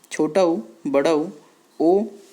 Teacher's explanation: व्रतमुखी जो होगा उसमें क्या आएगा? बोलते समय होंठ का जो आकार है वो व्रत की तरह हो जाता है